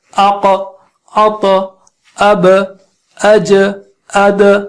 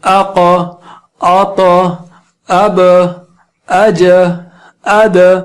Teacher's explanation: جب 5 حروف پر ان 5 حروف پر سکون آئے تو ان پر قلقلہ ہوتا ہے یعنی ایکسٹرا آواز نکلتی ہے